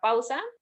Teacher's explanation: donde la A corresponde a una vocal abierta y la U a una vocal cerrada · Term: diptongo